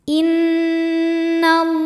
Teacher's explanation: Cara membacanya berdengung. Jadi bunyi n tahan sampai ada suara masuk hidung kurang lebih 2 harokat. Innallaha. Lam jalalah dibunyikan secara tafkhim karena didahului harokat fathah. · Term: gunnah musyaddadah